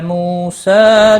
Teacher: واو مدہ ہے، ایک الف کے برابر کھینچ کر پڑھیں گے۔